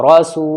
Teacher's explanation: سین واو پہ سو، واو ساکن سے پہلے پیش ہے سین کے اوپر، واو مد ہوگا یعنی واو کھچے گا